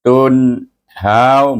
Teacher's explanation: Tun terus tahan lidah kita di mahraj nun. Tun How, baru sebut how, not. · nun ada sukun di situ bertemu dengan huruf halqum, baca dengan izhar ki, jangan panjang, jangan dengung.